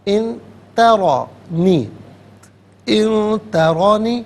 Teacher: ان ترانی، ان میں نون ساکن ہے اور اس کے بعد تا حرف اخفا ہے تو نون ساکن کو یہاں پر اخفا کے ساتھ پڑھا جائے گا، یعنی ناک میں آواز لے جا کر گنگنانا۔ ان ترانی، ترا میں را پر زبر ہے، را کو پر کر کے پڑھا جائے گا۔